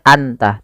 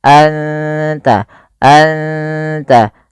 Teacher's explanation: suara nunnya samarkan ke ta dan tidak boleh dijelas, tidak boleh anta, tapi anta, anta, langsung ke makhraj daripada huruf ta. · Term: ikhfa hakiki